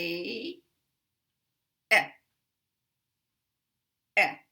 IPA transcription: ε